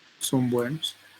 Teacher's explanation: Entonces, como estos es bilabiales, este, lo que va a ocurrir que esta nasal se va a realizar como bilabial